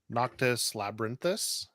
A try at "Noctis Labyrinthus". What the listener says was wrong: No. I think that you're missing a syllable there. Labyrinthus. You said labyrinthus. It's labyrinthus.